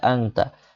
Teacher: এখানে আং সরিয়া অনস্বর আং এরকম হবে, তো একারটা আংতা। আর আং বলে আওয়াজ টেনে রাখতে, থামিয়ে রাখতে হবে, এটাকে গুন্না বলা হয়। আংতা নুন সাকিনের পর তা আসলে ইখফার গুন্না হয়।